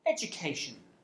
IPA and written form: edjʊˈkeɪʆən (education)